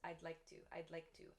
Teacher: Of course, there's a D sound, but when native speakers speak quickly, the D sound kind of disappears. I'd like to, I'd like to, I like to, I like to.